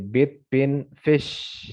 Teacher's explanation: Ini berarti di posisinya ada di close ya, close front vowel gitu ya.